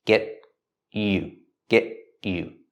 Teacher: first pronunciation we pronounce t as a stop T